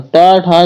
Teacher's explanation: जो टा वर्ग है दोस्तों ये मूर्धन्य के अंतर्गत आता है।